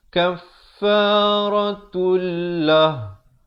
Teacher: Kaffaratul, di sini idgham bila gunnah, asalnya kaffaratun, tapi bila datang lam masuk tanpa dengung.